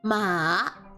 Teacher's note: The third tone is basically taking the fourth tone and combining it with the second tone. So you will start going down and then you will start going back up.